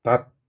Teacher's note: 히읗이 디귿으로 교체되는 음절 끝소리 현상이 일어났습니다